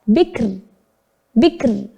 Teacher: Kemudian sebelum kaf sukun didahului oleh diawali dengan huruf yang berharokat kasroh. Maka kita membacanya tipis ro-nya atau tarkik. Bikrun dibaca bikr.